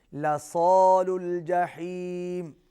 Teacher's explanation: صاد کو موٹا پڑھیں گے